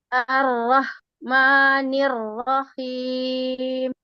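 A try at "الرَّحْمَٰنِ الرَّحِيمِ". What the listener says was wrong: A-nya nggak panjang Bu.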